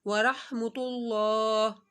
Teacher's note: اللہ سے پہلے پیش آ رہا ہے تو اللہ کو موٹا پڑا جائے گا